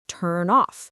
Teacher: The N sound links to the O sound. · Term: linking